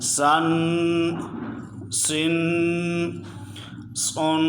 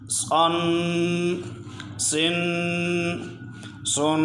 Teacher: سین کی آواز باریک ہے، صاد کو موٹا پڑھتے ہیں۔